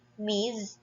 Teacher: usually assimilate the S to sound Z, so say mis with voicing throughout